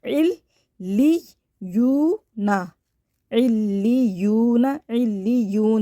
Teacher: واو ساکن سے پہلے پیش ہوتا ہے، یہ واو مدہ ہوتا ہے، اس کے الف برابر کھینچ کے پڑھیں گے۔